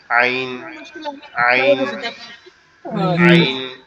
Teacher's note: আইন যে অক্ষরটা, এটা হচ্ছে আমাদের এই যে কণ্ঠনালীর মধ্যকান, অর্থাৎ আমাদের যে গলার যে উঁচু অংশটা আছে এইখান থেকে উচ্চারিত হয় একটু গলা চেপে